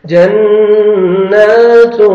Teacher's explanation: نون مشدد ہے غنہ کریں گے 1 سیکنڈ نون کو کھینچنا بھی ہے فتحہ الف صغیرہ جنات تا کو باریک پڑھیں گے اور تنوین